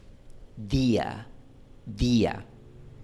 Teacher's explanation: yo tengo mi lengua en los dientes cuando pronuncio día. Bueno, estoy exagerando un poquito.